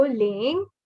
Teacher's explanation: this is the second tone, and your pitch rises. You go from low to high.